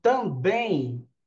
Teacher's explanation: Quando eu falo também, eu não pronuncio a letra M, eu pronuncio o M com o som de I. Então, na pronúncia, o meu M, ele é um ditongo, a gente chama ditongo nasal, né, ou ditongo fonético.